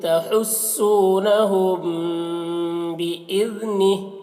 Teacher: हुम के मीम में देखिए यहाँ पर मीम साकिन के बाद बा है, तो इसे इख्फाए शफवी कहते हैं, इसे गुन्ना और इख्फा के साथ में पढ़ते हैं।